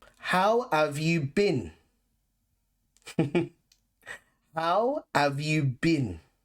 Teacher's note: notice that we use ave and not have and bin instead of being